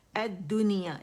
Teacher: لام کے آگے شمسی حرف ہے، اور اس نے لام کو اپنے اندر مدغم کر دیا، تو اب دال مشدد ہو گیا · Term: لام شمسیہ